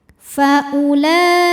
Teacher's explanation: hamzahnya ini tidak perlu dipanjangkan karena ini bukan mad badal jadi u-nya tetap pendek